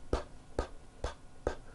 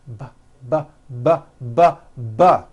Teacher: They are produced exactly the same way here in your mouth, but the P sound has no voicing and the B sound, b, b, does have voicing